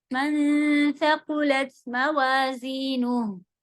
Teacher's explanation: زبان کی نوک ہم نے باہر رکھی تھی نون کو کھینچتے وقت ہی کیونکہ آگے سا تھا